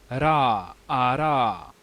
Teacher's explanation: the voiced alveolar tap ra which is transcribed as r